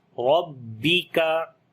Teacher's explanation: را کو بھی موٹا پڑھیں گے, زبر ہے اس کے اوپر, کاف کو باریک پڑھیں گے